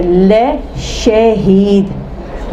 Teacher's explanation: اور ہمارے پاس یہ اردو کا لفظ ہے لے شہید، بولتے شاہد، شا نہیں بولتے، شے بولتے، لے شہید، تو زبر کی آواز گویا اے